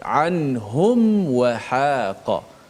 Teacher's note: Sebab mim dan waw tu makhrajnya dekat. Mim mati, mim tu di bahagian bibir kan. Kemudian lepas tu nak sebut huruf waw, huruf yang dekat bibir juga. Maka dia takut-takut dia tersalah dekat situ. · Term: izhar syafawi